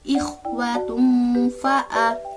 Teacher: maka dibacanya samar, antara jelas dan tidak, antara izhar dan idgham, dengan mendengung. Nah, jadi cara membacanya ikhwatum fa'a. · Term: ikhfa